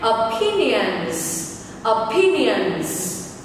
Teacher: Nhấn âm tiết số 2 nên ngữ điệu sẽ là la la la la, bao gồm 4 âm tiết la la la la.